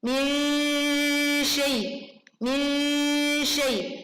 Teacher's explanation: Nun sukunnya bunyinya disamarkan karena bacaan ini artinya adalah samar sebetulnya ya. Dalam kaidah tajwid nanti kita akan pelajari tentang ikhfa.